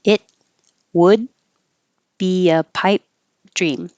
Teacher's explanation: and hold that final T it would be a pipe dream so you don't hear the T the D or the P